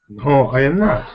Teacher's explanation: now you sounded slightly up on the tone